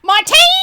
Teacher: I instead put all of the emphasis on the second syllable and called him Martine throughout the entire thing.